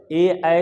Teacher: ए ऐ का उच्चारण कंठ तालव्य से होता है